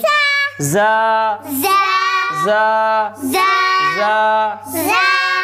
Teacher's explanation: اس میں سیٹی کی آواز ہو تیز آواز ہو اس میں